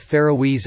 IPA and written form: ˌfɛəroʊˈiːz (Faroese)